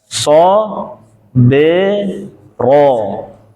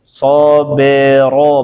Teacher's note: Ba ini kol-kolah nyengir. Ro ngalir tebel.